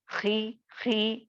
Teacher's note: آپ کو تو وہ حرف کو موٹا کر کے ہی پڑھنا ہے، لیکن پڑھتے وقت یہ اتنا موٹا نہیں ہوگا جتنا کہ آپ پیش اور زبر لگا کر پڑھو گے، ٹھیک ہے؟ یہ تھوڑا اس کے حساب سے موٹاپے کی یعنی حرف کو موٹا کرنے کی لیول جو ہوتی ہے وہ تھوڑی کم ہو جاتی ہے. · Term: تفخیم